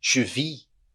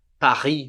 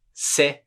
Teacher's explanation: T e S a gente não pronuncia no final das palavras